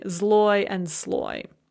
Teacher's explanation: they both have a consonant followed by l and that first consonant does not change its voiced or voiceless quality